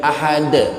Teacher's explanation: huruf qalqalah yang mati karena diwakafkan, bukan mati asli, tapi karena diberhentikan sehingga menjadi qalqalah. Seperti qul huwallahu ahadun, aslinya ahadun, aslinya ahadun, cuman karena diberhentikan, dimatikan dalnya menjadi ahad, itu qalqalah kubro.